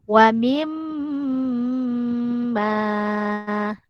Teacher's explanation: mim sukun dibaca ikut hukum wajibul gunnah, maka kita kena dengungkan.